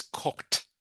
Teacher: it is pronounced like it has a t. So it's not cookhead.